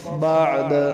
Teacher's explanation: دال حروف قلقلہ سے، وقف میں ساکن ہو گئی تو قلقلہ ہوگا